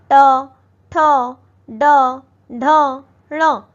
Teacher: इसमें हमारी जीभ फोल्ड करके थोड़ी मुड़ती है ऊपर की तरफ उसके बाद तालु के ऊपरी हिस्से को टच करती है। इसलिए इसे मूर्धन्य कहा जाता है।